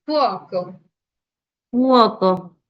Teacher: con lo que es la F es el labio inferior que toca los dientes superiores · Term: labio dental